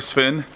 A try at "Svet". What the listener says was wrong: It's a Svet with a T.